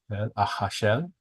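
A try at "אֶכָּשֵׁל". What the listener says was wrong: Okay, now there's a dot in the kaf, which means it's a hard K.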